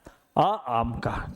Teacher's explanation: अगर आ आम का बोलोगे तो आपका मुख क्या है, सबसे अधिक खुला रहता है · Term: विवृत